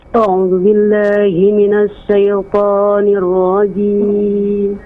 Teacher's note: a'udzunya dipanjangkan 2 harokat